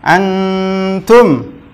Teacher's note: dibaca samar sampai tiga ketukan ya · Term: ikhfa